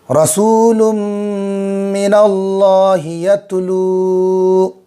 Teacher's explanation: رسول من اللہ یتلو، رسول سو میں واو مدہ ہوگا، ایک الف کے برابر کھینچیں گے